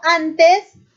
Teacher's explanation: Cuando yo digo antes, esta N va a ser un sonido dental.